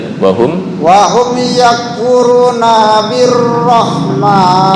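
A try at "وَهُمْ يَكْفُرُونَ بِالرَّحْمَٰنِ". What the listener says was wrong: Yakfuruna Oke, ntar dibiasakan ro jangan bergetar ya. Ro birrahman bukan birrahman, bukan. Birrahman wahum yakfuruna birrahman.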